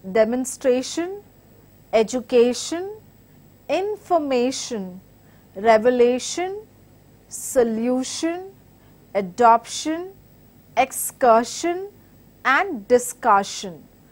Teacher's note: So these are the words which follow a set rule of syllable stress, where you basically give the word stress on the second from the end, which is penultimate syllable